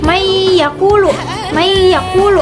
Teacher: Apabila nun mati bertemu dengan ya, maka memasukkan ke huruf yanya dengan menggunakan dengung. Maka ditahan atau di ee tahan dua harakat gitu ya. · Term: idgam bigunah